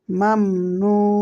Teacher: লাম এখানেও মিম সাকিন মিম সাকিনের বামে ইয়া ইজহারে সাবাবির হরফ মিম সাকিন কে গুন্না ছাড়া স্পষ্ট করে পড়তে হবে